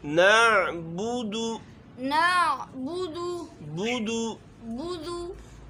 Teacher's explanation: با کے اوپر بھی پیش ہے، دال کے اوپر بھی پیش ہے، یہاں ہمارے ہونٹ گول ہوئیں گے